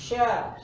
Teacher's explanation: Sya suaranya berasal dari tengah lidah yang menyentuh langit langit